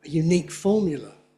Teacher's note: I don't have a stress on the first syllable of unique.